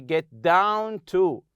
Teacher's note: in two word and three-word verbs the stress is placed on the second word